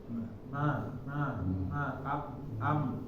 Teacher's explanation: kita mengucap huruf Ma kita tutup hidung kita ma ma am nah ini hidung terasa bergetar ketika mengucapkannya